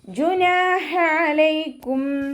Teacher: ജുനാഹ അലൈക്കും, നൂനിൻ്റെ കൂടെ അലിഫ് മദ് വന്നു, 2 കൗണ്ട് നീട്ടി കൊടുക്കുക. ഹ അക്ഷരത്തിൻ്റെ സൗണ്ടിനെ തൊണ്ടയുടെ മധ്യഭാഗത്ത് തന്നെ കൊണ്ടുവരിക കേട്ടോ. ഹ എന്നുള്ള അക്ഷരത്തിൻ്റെ സൗണ്ടായി പോവരുത്.